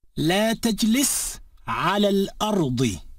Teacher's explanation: When al, or the, is preceded by a word ending in a vowel, the alif becomes silent and the preceding vowel sound is slid together with the lam of the al, so it sounds as if there is no space or pause between the words. · the a sound of the alif al-maqsura in ala is shortened so that it sounds like a fatha.